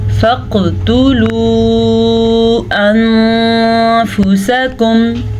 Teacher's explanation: قاف پہ کلکلا ہو رہا ہے کیونکہ کلکلے کے 5 حروف میں قاف شامل ہے